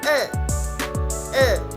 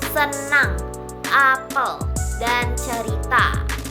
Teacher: lidah diletakkan di tengah mulut dengan posisi netral, tidak terlalu tinggi ataupun rendah dan bibir tidak terlalu terbuka. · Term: vokal tengah